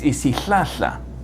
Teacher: You put your tongue in the position for l, and then expel a heavy stream of air which causes friction. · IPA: [isíˈɬaːɬa]